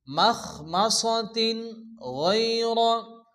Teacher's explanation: তো তানবিনের পরে ইজার হালকি 6টি অক্ষর হামজা হা আইন হা গাইন খ, এখানে গাইন আসছে, এর জন্য বিনা গুণা তাড়াতাড়ি পড়তে হবে।